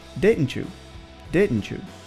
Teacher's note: it's very common in American English to include a ch sound in between words that end in the letter T and begin with the letter Y